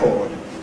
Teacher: But the noun ‘a record’ /ˈrekɔːd/, stressed on the first, typical disyllabic noun.